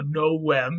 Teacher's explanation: Novem, the V sound, or rather the V letter in Latin was a W sound.